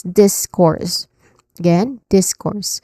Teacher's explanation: And then letter R followed by letter R and letter S sounds, okay? So the stress syllable here is in the first syllable. So you say this with more emphasis.